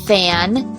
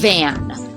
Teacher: So we only have a fricative like this, like fan and van, voiceless and voiced v. Same sound, the only difference is voiced and voiceless.